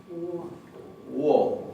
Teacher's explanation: La primera O del alfabeto islandés se pronuncia un poquito como en ruso, wo, como si tuviera una pequeña U adelante.